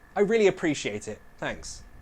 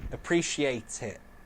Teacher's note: I would glottalize that final T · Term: glottalized the final T